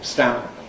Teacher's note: Vocal folds stop pretty much at the moment when the velum makes contact. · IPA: [stæ̃mp]